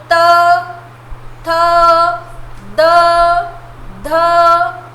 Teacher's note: तो बोलिए त, थ, द, ध, लग रही है ना, न टंग लग रही है दांत को, इसलिए इसे दंत्य कहते हैं, दंत्य वर्ण है ना।